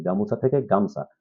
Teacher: গামুসা, এই যে রস্য উ, পরেরটাতে গামছা বলতেছি, গামুছা থেকে গামছা, তার মানে কি উ ধ্বনি এখানে কি পেয়েছে, উ ধ্বনি লোপ পেয়েছে